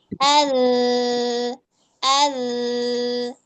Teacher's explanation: rasakan juga aliran suaranya itu dia merayap merayap di permukaan lidah az jadi enggak ngangkat dia nantinya.